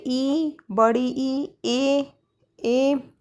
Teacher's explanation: अग्र स्वर वो होते हैं जिनके उच्चारण में जीभ का अग्र भाग काम करता है।